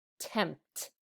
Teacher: we don't hear the p sound as well when we say the word like tempt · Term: 3-sound blend